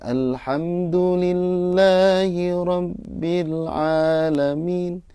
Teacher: mat tobi'inya kepanjangan atau terlalu panjang ya